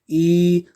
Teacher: जैसे आप उच्चारण करिए ई, तो ई को आप देखेंगे ई वर्ण जो है उच्चारण करते समय जो जीभ है आपकी मुंह की छत तक उठी गई है। तो मुख द्वार जो होता है लगभग बंद रहता है। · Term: समृत स्वर